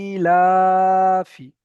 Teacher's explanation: এই ইটা যতটা টান দেব লাটাও ততটা ঠিক ততটাই টান দেব কারণ এখানেও এক আলিফ টান এখানেও এক আলিফ টান এখানে বেশি করে দেব এখানে কম করে দেব এমনটা করা যাবে না ইলাফি যখন আপনি বেশি কম করবেন তখন পড়া তো হয়ে যাবে কিন্তু আপনার যে পড়ার যে একটা সৌন্দর্য সেটাই নষ্ট হবে এজন্য করে দুট একই একই একই টান দিয়ে পড়তে হবে।